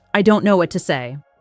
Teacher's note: Soft, shy, almost like a whisper